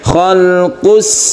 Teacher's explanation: Idgham artinya masuk ke huruf sin. Oleh karena itu sin ini harus ditasydidkan. Tasydid itu berarti kita menekan ke hurufnya. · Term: idgham syamsiyah